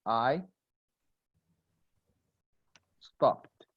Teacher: The ed is pronounced like a T, T as in table, after voiceless sounds like P, K, S, SH, even CH